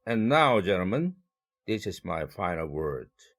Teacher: 그러나 gentlemen까지 끊고 this is my final word 별도의 의사단락을 만드는 것입니다. 그래서 gentlemen 할 때 gen의 1강세를 배당할 것이고 두 번째 의사단락에서는 word가 가져가겠죠